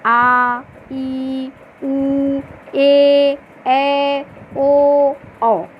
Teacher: इनको ह्रस्व स्वर के अपेक्षा 2 गुना समय लगता है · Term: दीर्घ स्वर